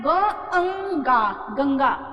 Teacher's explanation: इनकी साउंड आधी हो जाती है ध्वनि आधी हो जाती है और जब बोलते हैं तो हवा नाक से निकलती है अंग की बिंदी के रूप में निकलती है जैसे यहां देखिए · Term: अनुस्वार